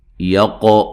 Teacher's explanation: قاف کو موٹا ادا کرنا ہے اور قلقلہ کرنا ہے